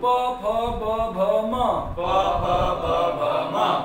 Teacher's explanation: ज्या वर्णांचा उच्चार हा ओटांच्या माध्यमातून होतो त्यांना म्हणतात ओष्ठ वर्ण किंवा ओटाचा जास्तीत जास्त उपयोग होतो त्याला म्हणतात ओष्ठ वर्ण.